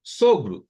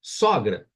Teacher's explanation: sogro som fechado sogra som aberto